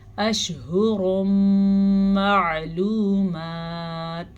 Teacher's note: عین کے مخرج کو واضح کر کے پڑھیں۔ اگر ہم اس کو واضح نہیں کریں گے تو یہ حمزہ بن جائے گا، یعنی کہ معلومات، تو یہ غلط ہو جائے گا۔